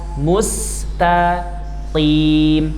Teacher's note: Qaf kasrah tebal tapi tidak sampai seperti shad yang di awal.